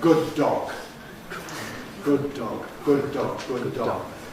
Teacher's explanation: We make, in fact, just a single articulation for the two Ds, good dog. Phonetically, really, it's a single plosive, but with a long hold. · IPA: [ˌgʊd̚ ˈdɔg]